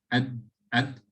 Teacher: Dal comes from the dal, the tip of the tongue touching the gum line of the upper central incisors